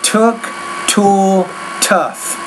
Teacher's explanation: pronounce the T with a little more air